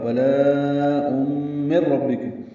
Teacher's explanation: نون کی آواز ختم ہو جائے گی، را پر پڑھیں گے، با سے ملائیں گے۔ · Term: ادغام کامل